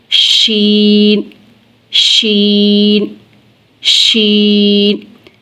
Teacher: जब हम शीन को अदा करते हैं तो इसकी आवाज मुंह में फैल जाती है। देखिए फैल रही है। · और शीन का मखरज है, ज़ुबान का दरमियान जब तालु के दरमियान से मिलेगा तो शीन अदा होगा